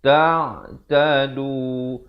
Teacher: Tapi bila datang ta, disamarkan bunyinya di antara nun dan ta dengan kadar dua harakat. Nak kata nun pun tidak, nak kata ta pun tidak. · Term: ikhfa hakiki